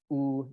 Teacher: oo is kind of back and high